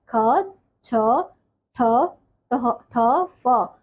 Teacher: जिन वर्णों के उच्चारण में श्वास वायु अपेक्षाकृत अधिक मात्रा में बाहर निकलती है उन्हें महाप्राण कहते हैं